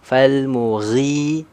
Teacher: huruf mad thaabiinya panjang dua harakat yang enggak masuk ke hidung · dia keluarnya dari rongga tenggorokan dan rongga mulut terbuka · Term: Mad Thobi'i, makhraj Al jaauf